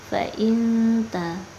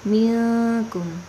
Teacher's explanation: ikhfa aqrab atau dekat, nun mati bertemu dengan taknya. Jadi kita baca tidak terlalu mendengung.